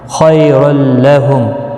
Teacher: خی یالین ہے تھوڑا نرمی کے ساتھ کھینچ کر ادا کریں گے